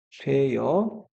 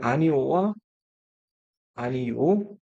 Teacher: 반모음이 첨가돼서 여로 발음된다. 이렇게 되는 거다. 이렇게 생각해 주시면 되겠습니다. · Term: 반모음 첨가